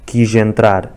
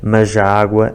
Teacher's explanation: a substituição do som Z pelo som G na ligação de palavras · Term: sotaque do Algarve